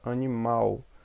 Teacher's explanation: a sílaba mal está sendo a sílaba tônica